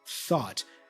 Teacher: Here we have a voiceless TH, thought